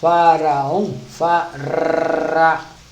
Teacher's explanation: o R deve ser na ponta da língua